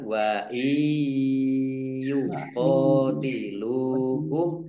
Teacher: Nun sukun bertemu dengan huruf ya, bacaan idgham bi gunnah, masuk dengan mendengung, yaitu mendengung ya, ditandai ya-nya ada tasdidnya, ya-nya dibaca mendengung, ditahan.